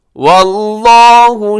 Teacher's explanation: لفظ اللہ کھینچ کے لمبا کر کے کھڑی زبر ہے، موٹا بھی پڑھیے گا اس کو